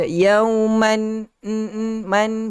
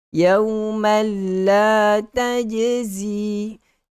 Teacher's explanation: Masukkan tanwin, bunyi tanwin itu ke dalam huruf lam, maka tidak ada lagi bunyi tanwin. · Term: idgham bila gunnah